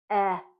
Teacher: That means that it's a voiced sound. So we know when we make the eh sound, our mouth is open and it's smiling, and it's a voiced sound.